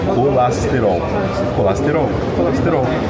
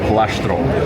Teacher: The S becomes sh